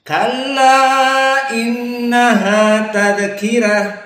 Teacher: Kalla innaha tadzkirah, rata semuanya. Karena rohnya di sini dalam keadaan tarqiq ala qiraah man wars annafi.